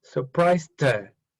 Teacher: So the T sound mixes with the her.